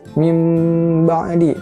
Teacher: Nah, nun mati atau tanwin ketika bertemu dengan huruf ba jadinya iqlab dibacanya. Yang tadinya konsonannya n jadi mim dan ditahan 3 harokat.